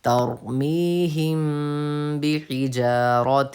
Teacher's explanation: میم ساکن کے بعد با ہے تو غنہ کے ساتھ اخفا ہوگا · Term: اخفا شفی